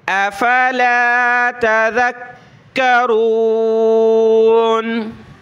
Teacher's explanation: کاف کو سخت کریں گے تشدید کی وجہ سے، ذال پر زبان نکالیں